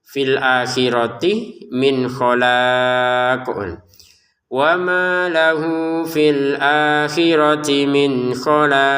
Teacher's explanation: Ujung-ujungnya qofnya kita pantulkan ya. Jangan sekedar khalaq mana pantulannya enggak ada min khala. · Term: pantulannya qof